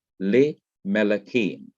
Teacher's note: Well, we have the same thing happening here when you have the simple schwa under lameth coming side by side with the simple schwa under the first syllable of melakim. The simple schwa under lameth has to be lengthened to the short I sound, a, the short hirik or kirik.